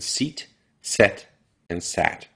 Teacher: your tongue starts up high e goes to the middle of your mouth a and then goes down to a